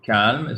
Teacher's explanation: So you do not pronounce the L in English, but you do in French.